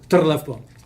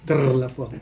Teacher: the double R is a very strong trill